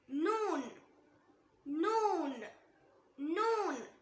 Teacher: Next letter நூன் நூன். நூன நாக்கோட நுனி மேல் பற்களோட ஈருக்கு கொஞ்சம் உள்ள இருந்து சொல்லணும்